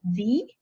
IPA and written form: ði (the)